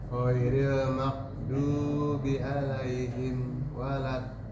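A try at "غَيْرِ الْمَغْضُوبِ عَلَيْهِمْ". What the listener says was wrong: Tapi PR-nya satu huruf lagi Pak. Do. Nah, huruf do masih tipis, masih maghdu. Do. Usahakan tempelkan lidah tepi kanan atau tepi kiri dengan geraham.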